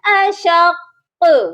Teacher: اگر تو یہ ساکن ہوتا، یہ پڑھا جاتا اشق اشق، تو یہ ڈھیلا سا پڑھا جاتا، لیکن اس کے اوپر مشدد ہے تو اس پر ہم نے سختی سے قلقلہ کرنا ہے